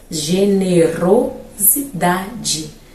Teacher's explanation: Só que teremos uma outra sílaba que também traz um pouquinho ali de barulhinho para o nosso ouvido, que vai ser o ro. Então o ro será a nossa sílaba subtônica